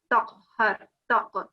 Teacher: You're doing the qalqala, but you need to pronounce that qa from your throat.